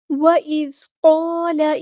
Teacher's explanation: ये जो अलिफ है ये भी पूरा होगा क्योंकि साथ वाला हर्फ वो पूरा है, हैवी है, तो इसलिए ये अलिफ भी हैवी अदा होगा।